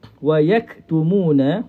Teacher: huruf kaf berada di pangkal lidah